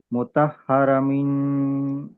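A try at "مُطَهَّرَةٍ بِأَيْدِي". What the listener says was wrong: లేదు, ఇక్కడ వరకు బాగా వచ్చారు, ఇక్కడ మిస్ అవుతున్నారు. తా కస్రా మీమ్ సాకిన్ చదవండి. తా కస్రా మీమ్ సాకిన్. తా కస్రా,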